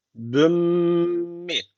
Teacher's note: yapacağız şöyle okuyacağız büm mii bu şekilde büm büm diye kapatıyoruz M sesiyle yani sonu kapatıyoruz ağzı büm büm sonra bir Elif tutuyoruz sonra mi diye açıyoruz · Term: idgamı meal gunne